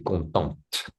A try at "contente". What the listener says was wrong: Donc, le T. Il faut prononcer le T.